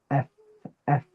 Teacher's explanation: Your bottom lip presses against your top two teeth or one of the top two teeth. That makes a F sound, right? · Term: fa